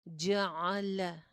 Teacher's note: हुवल्लज़ी जअल, जअल, जीम के ऊपर भी जबर है, आइन के ऊपर भी जबर है, लाम के ऊपर भी जबर है। तीनों लेटर्स एक जैसे अदा होंगे, कोई भी जबर लंबी नहीं करनी